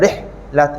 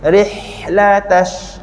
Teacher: huruf ha ni dia ada angin, hamas Tapi kalau kita salah buat, nanti angin dia terputus.